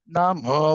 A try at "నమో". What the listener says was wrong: నమో దీర్ఘం ఉందండి. నమో